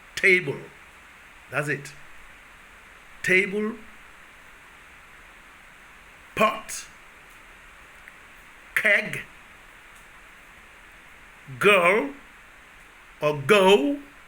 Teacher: all these you have total occlusion total stoppage the two organs make a stop contact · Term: plosive sounds